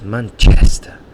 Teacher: I've got a friend, he's from Paraguay, and he always laughs at my pronunciation from Manchester, because he says Manchester, and he really exaggerates the chest, and that's where the stress is in that word, in that noun.